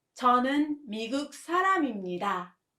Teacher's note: 미국 사람 has a 미음 as the final consonant. So you have to let it flow with 입니다.